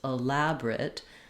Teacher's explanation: It's okay to say elaborate, but you might notice that that middle schwa often gets dropped out because it's so fast and unimportant. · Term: reduced version